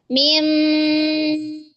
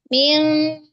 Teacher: Rasakan dia itu suaranya mengalir ke mulut dan hidung.